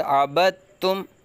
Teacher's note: دال ساکن کو چھوڑ دیا ہے، با کو تا کے ساتھ جا کے ملا کے پڑھا ہے